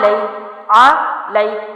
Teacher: حرف کو نرمی سے پڑھتے ہیں اور جلدی چھوڑتے ہیں اور مجہول نہیں کرتے، لے نہیں پڑھتے، اس کو لئی کرنا ضروری ہے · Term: یائلین